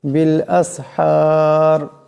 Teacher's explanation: এখানে বড় হা আছে, আওয়াজটা গলা থেকে আনতে হবে।